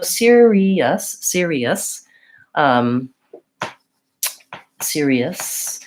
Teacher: at the end of that word the ous tends to be a reduced vowel sound so when i'm saying the word serious i do have two